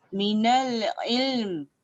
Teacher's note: Dia tak boleh bunyi im. Kalau kita baca minal im, lam tak ada.